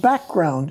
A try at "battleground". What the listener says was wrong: Battleground. You said background.